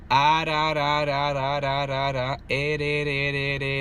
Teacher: It's just flicking the roof of my mouth.